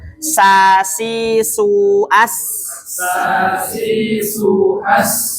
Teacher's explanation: sa lidah depan bertemu dengan gigi bawah ya